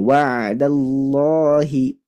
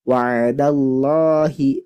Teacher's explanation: fathah sebelumnya fathah maka harus dibaca tebal